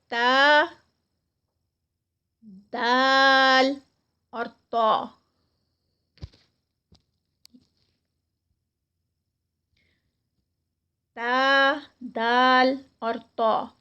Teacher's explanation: اس میں تا اور دال جو ہیں یہ لائٹ لیٹرز ہیں اور طا جو ہے یہ موٹا ادا کیا جاتا ہے. اور اس میں زبان کی نوک اوپر کا حصہ اور اوپر کے سامنے والے 2 دانتوں کی جڑ آپس میں ملتی ہے